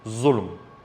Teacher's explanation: Or you have the word dhulm, injustice. In dialect, this would be zulm with a za, heavy za sound.